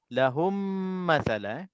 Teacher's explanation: Mim mati bertemu dengan mim, hukumnya kita baca dengan dengung dan dengungnya dah tentu je kalau sebutnya dengung, semua dengungnya 2 harakah belaka. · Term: idgham mithlain saghir